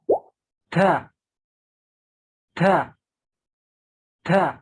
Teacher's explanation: Ta ini salah satu huruf hijaiyah yang keluar dari lidah al-lisan. Ta yang terletak di pertemuan antara ujung lidah dengan pangkal gigi seri atas serta memiliki 5 sifat.